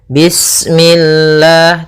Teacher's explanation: lafal Allah ketika sebelumnya kasrah maka dia dibaca dengan tipis ya dengan L. Bismillah tidak bismillah ya.